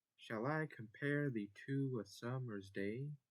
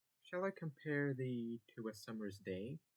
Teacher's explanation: Yes, the to is stressed